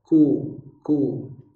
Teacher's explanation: Tapi tidak diangkat lidahnya karena dia bersifat infitah. Hanya pangkal lidahnya untuk posisi makhrajnya saja. Ku. Tidak ku, nanti jadi qaf.